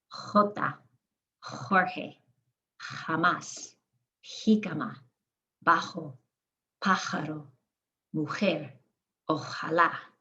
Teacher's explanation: The J sounds like that throaty H, the same sound that the GE and the GI make.